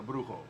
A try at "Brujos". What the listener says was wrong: Yes, this is the Brujos. There's an S at the end.